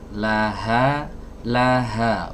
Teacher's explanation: nah huruf H keluar dari tenggorokan bagian bawah